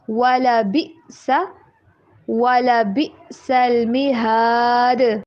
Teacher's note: حمزہ کے اوپر بالکل آواز کٹ ہو رہی ہے، آواز بالکل بلاک ہو جائے گی حلق سے نکلنا ایسے.